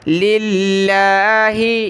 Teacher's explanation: لفظ اللہ کو باریک پڑھیں گے کیونکہ لفظ اللہ سے پہلے والے حرف لام پر زیر ہے تو باریک ہوگا لفظ اللہ۔ لِلَّهِ، اس کو آپ نے للہ